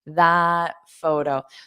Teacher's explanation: So you don't have to pronounce this end t